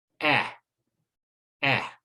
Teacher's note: So words like fan and mat both use the ah sound. Now the short E sound is higher up, okay, in the mouth, but it's still near the front of the mouth, and we get eh, eh.